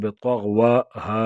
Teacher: مد فرعی، 4 یا 5 الف کی مقدار اس میں آواز کھینچیں گے